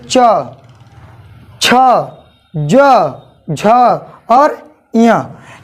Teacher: आपका जीभ जो है, जिह्वा जो है वो तालु को टच करेगा। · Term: तालव्य